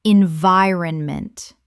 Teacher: 4 syllables with the stress on the second.